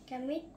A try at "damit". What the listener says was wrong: Damit. Damit. Not damn it. damit.